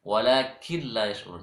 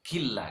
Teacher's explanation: Non mati bertemu lam. Cara bacanya non mati masuk ke lam. Sama dengan idgham bi gunnah tadi itu dimasukkan juga ke huruf sesudahnya. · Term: Idgham bila gunnah